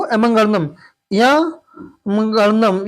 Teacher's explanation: इनका उच्चारण स् क्या होता है नासिक भी होता है यानी नाक से भी आवाज निकलती है